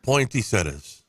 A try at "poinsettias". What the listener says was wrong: Poinsettias. There's no T in it. Yeah, you're right, but not in the middle where he said it. Poinsettia.